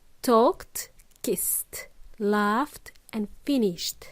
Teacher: it's a very soft um T sound when we pronounce these verbs in their past tense okay so these voiceless sounds they are p f and Sh